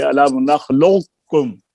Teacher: اسی طرح قاف کا ادغام کاف میں یہ بھی ناقص ہے، قاف کی تفخیم پیچھے رہ جائے گی